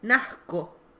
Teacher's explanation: se incorpora el sonido Z, que es el que mantiene el sonido C de nacer o de conocer, y aparece un sonido K, que es el que rompe con esa forma.